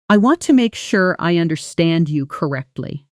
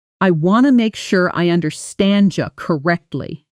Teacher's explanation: blending the D and Y sounds into a soft J